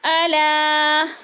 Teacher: الا، الا پہ مد منفصل ہے، حروف مدہ کے بعد حمزہ دوسرے کلمے میں آ گیا ہے تو مد منفصل 4 الفی مد ہے، اس کو ہم نے 4 الف کے برابر لمبا کر کے پڑھنا ہے